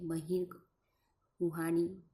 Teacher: નાદતંત્રીઓ તંગ હોય પણ પૂરેપૂરી તંગ ના હોય જરાક જ શિથિલ હોય · નાદતંત્રીઓ તંગ હોય પણ પૂરેપૂરી તંગ ના હોય, જરાક શિથિલ હોય તે સમયે બહાર નીકળતી હવા જે ધ્વનિ ઉત્પન્ન કરે છે તે ધ્વનિને મર્મર ધ્વનિ કહેવામાં આવે છે. ઉદાહરણ તરીકે બહિર્ગ, કુહાડી વગેરે શબ્દોમાં હનું જે ઉચ્ચારણ છે તેને મર્મર ધ્વનિ કહી શકાય.